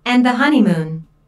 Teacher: There are three syllables in honeymoon, with the stress on the first syllable, H-O-N-A-moon.